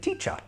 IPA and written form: tiʧə (teacher)